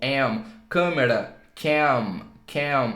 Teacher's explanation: A gente fecha o lábio quando fala o M em inglês.